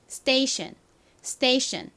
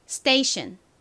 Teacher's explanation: station이 아니라 station, station 이렇게 쌍디귿에 가깝게 발음이 납니다